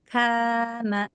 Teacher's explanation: K K tipis tipis. Ketika sesudah ka ada alif dia alifnya terbawa tipis oleh kaf kana. Karena kaf huruf tipis tarkik yang istifal maka si alifnya jadi tipis.